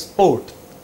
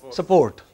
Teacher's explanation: in the Northwest, they add an E between S and P. not before.